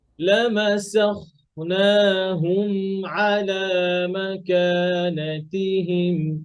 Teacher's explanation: ولو نشاء لمسخناهم على مكانتهم এই যে লামাসাখ, খটা একটু মোটা আর মিমটা ধরে